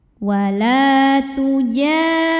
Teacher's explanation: adalah Mad Thobi'i dahiri karena ada Alif yang sebelumnya berbaris fathah maka cara bacanya Jim panjang dua harakat